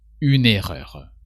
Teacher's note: the UN and error tend to merge together